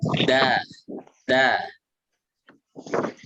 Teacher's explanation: Ini sama ini isti'la, kalau to itu isti'la itbaq. Kalau yang dal istifal infitah. Itu artinya dibaca tipis.